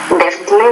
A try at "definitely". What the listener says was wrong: So there, definitely, you're not, I think it's a word stress issue. Definitely.